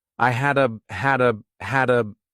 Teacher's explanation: so I combine hadda together as one word. I had a hunch he'd quit.